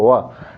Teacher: इसका जो उच्चारण स्थान है दंत और ओट दोनों से होता व ठीक व इस तरीके से इसलिए इसको दंतोर व्यंजन में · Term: दंत ओट